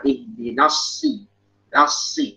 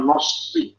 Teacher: Gimana kalau gabung dengan shad dijaga ketipisan nun.